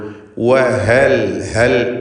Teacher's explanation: 2 ചുണ്ടുകളിൽ നിന്ന് വരണം. ചുണ്ടുകൾ വൃത്താകൃതിയിലാകും വാവ് ഉച്ചരിക്കുമ്പോൾ. വഹൽ ഹൽ എന്നത് ഹ തൊണ്ടയുടെ അങ്ങേയറ്റമായ അഖ്സൽ ഹൽഖിയ അക്ഷരമാണ്.